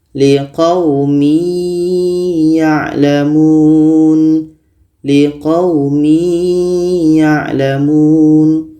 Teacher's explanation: Maka tanwin ini kita masukkan ke ya. Masuknya tanwin kepada ya tidak sempurna. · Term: idgham naqish